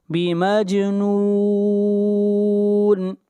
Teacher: جیم کے اوپر قلقلہ ہوگا، آواز کو ہلائیں گے